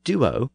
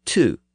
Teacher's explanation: Duo has the original D sound, and two has the later Germanic T sound.